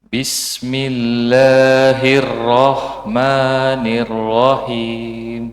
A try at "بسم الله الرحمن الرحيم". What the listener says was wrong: Nah, itu masih ada wawunya. Ada huruf wawunya di antara itu. Rahman. Itu di latihan lagi Rahmannya.